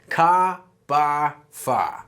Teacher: Boston accent is definitely non-rhotic. We're going to drop those final Rs.